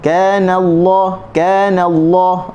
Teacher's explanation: apabila nun sebelumnya tu berbaris atas, maka kita akan baca Allah ni dengan tebal